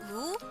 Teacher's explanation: The long U sound is a close back rounded vowel as in moon or use. The back part of the tongue raises toward the soft palate, while the front part of the tongue is down just behind the bottom front teeth.